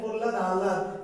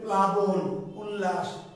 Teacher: ফলা মানে হলো যেখানে উচ্চারণটা একটুখানি একটু অন্যরকম, একটু উজ্জ্বল বা একটু এই টাইপের হবে। প্রহ্লাদ হয়ের উচ্চারণটা বেশি হচ্ছে, লটা হালকা সফট হয়ে যাচ্ছে।